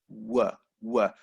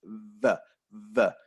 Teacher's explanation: with W, there is no contact between the lips and the teeth